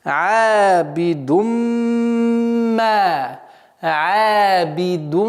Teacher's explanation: «Абидумма». После назализации в размере двух огласовок ударение два счета. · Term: правило идгама